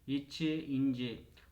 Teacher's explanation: நாவின் இடை அன்னத்தின் இடை